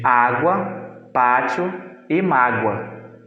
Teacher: sofre uma obstrução do ar na zona medial da boca mas não são o suficiente para se constituírem como consoantes elas se juntam em outras vogais para formar a parte vocálica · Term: semivogais